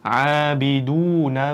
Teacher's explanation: Abiduna da bu yerda 2 harakat cho'zilishimiz bor. Abiduna. Ba'ni kasrasiga e'tiborli bo'lishimiz kerak.